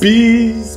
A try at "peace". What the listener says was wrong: Not please. It's peace.